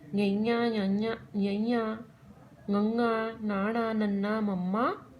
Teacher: ਅਨੁਨਾਸਕ ਹੁੰਦਾ ਹੈ ਜਿਨ੍ਹਾਂ ਅੱਖਰਾਂ ਨੂੰ ਬੋਲਣ ਸਮੇਂ ਨੱਕ ਰਾਹੀਂ ਆਵਾਜ਼ ਆਵੇ, ਉਹ ਅੱਖਰ ਸਾਡੇ ਅਨੁਨਾਸਕ ਜਾਂ ਨਾਸਕੀ ਅੱਖਰ ਅਖਵਾਉਂਦੇ ਹਨ।